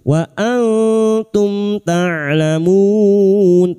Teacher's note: Mim sukun dibaca jelas tanpa mendengung. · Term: idhar syafawi